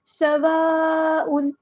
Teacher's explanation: سین میں سٹی لے کر آنی ہے، حروف صفیریہ میں سے ہے، سواء نہیں پڑھنا، سوا سواء، سین باریک پڑھنا ہے، حروف صفیریہ کا لیٹر ہے۔